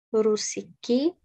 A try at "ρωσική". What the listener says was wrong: Ωραία, είναι ρο. Ρωσική.